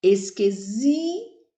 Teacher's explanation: o zi é a sílaba mais forte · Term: paroxítona